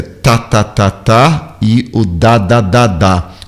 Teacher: Um vibra, o outro não vibra, o D vibra, o T não. Mas prestem atenção que no caso do português a língua encosta o dente por trás, né? · no caso do português a língua encosta o dente por trás, né? Chega a tocar o dente de cima.